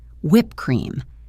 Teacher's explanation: You close your mouth for the P in whip, stop the sound, and then open your mouth to say cream.